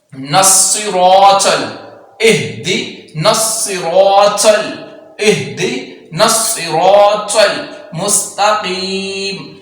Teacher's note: صاد کی آواز کو سیٹی کے ساتھ پڑھیں گے لیکن پور پڑھیں گے